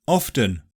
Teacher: it's optional in OFTEN, yeah people often drop the T there. More often than not I'd say.